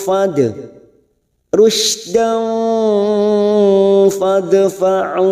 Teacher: Hum rusydan, rushin sukun, rusydan fa. Fathah tanwin bertemu fa, ikhfa hakiki. Kita samarkan bunyi fathah tanwin.